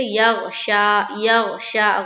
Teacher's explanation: تو غین دیکھیے حروف قلقلہ میں سے نہیں ہے تو ہم یہاں پر قلقلہ نہیں کریں گے، ہم بالکل آسان طریقے سے یغشا، یغشا، غین کی مخرج کے اوپر ہماری آواز رک جائے گی